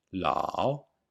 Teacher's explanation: The o is very short, and some people only hear the a, la. But there is a difference between la and lao. · you can hear a long a and a short o